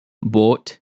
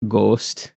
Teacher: for those who are not familiar with like a Wisconsin accent, they pronounce O's really long. So, instead of boat, it's like boat or instead of ghost, it's ghost. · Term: elongated O